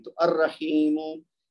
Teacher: را حرف شمسی ہے، لہذا اس سے پہلے اگر الف لام ہے تو لام کی آواز نہیں آئے گی